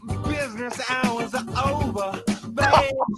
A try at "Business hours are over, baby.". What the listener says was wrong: And I love one more time on the pronunciation of over. There's no R here.